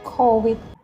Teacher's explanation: Thailand people often to change the word V in the middle of sentence into the W.